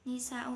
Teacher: ini bacaan mad wajib mutasil sebab mad tabi'i bertemu hamzah dalam satu kalimat